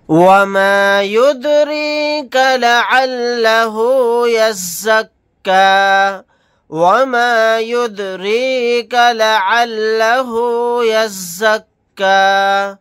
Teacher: یہاں پر دال ساکن ہے، قلقلہ کر کے پڑھیں گے، را کے نیچے زیر ہے، را کو باریک پڑھیں گے